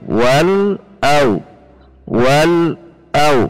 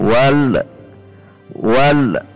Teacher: Ketika membaca wal, ujung lidah kita menekan titik lam dan itu tidak usah dilepas, langsung membaca yang ada di depannya